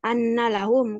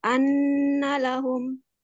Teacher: di tasdidnya mungkin agak dikasih lama sedikit